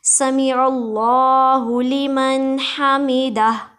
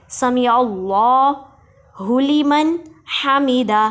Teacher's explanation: جی سمیع اللہ میں سین کو سیٹی کی آواز سے ادا کریں گے، عین کو حلق کے درمیان والے حصے سے ادا کریں گے، اور اس میں جلالت اللہ کے لام کو موٹا پڑھیں گے.